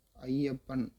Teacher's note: ஐ சொல்லி முடிக்கறதுக்கு முன்னாடியே யா வந்து என்ட்ரி போட்டுறார். அப்ப ஐய உடைய உச்சரிப்பு குறைந்து இரண்டு மாத்திரையிலிருந்து அரை மாத்திரை குறைந்து ஒன்றரை மாத்திரையாக குறைந்து ஒழிக்கக்கூடிய இதைதான் நம்ம ஐகார குறுக்கம் என்று சொல்கிறோம்.